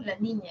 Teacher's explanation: Ya, por ejemplo, decimos si tú pones tu lengua, como vas a decir la L del artículo la, ¿no? La niña, y vas a decir la L, el aire sale por los costados.